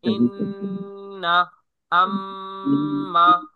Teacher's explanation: নাকের বাসি হইতে গুন্নাহ উচ্চারিত হয় যেমন ইন্না আম্মা